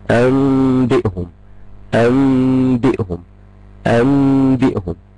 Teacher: انبئهم، هخش اعمل اول خطوة ان انا النون هقلبها ميم، الميم هخفيها، هغن بمقدار حركتين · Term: الإقلاب